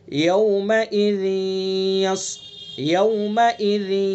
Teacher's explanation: یہاں بس اتنا سمجھ لیں کہ اس کے اندر ادغام ناقص ہوگا یعنی غنہ ہوگا. ذال کے نیچے جو تنوین، اس تنوین کو یا کے اندر ملائیں گے اور ایک الف کے برابر ناک میں رکیں گے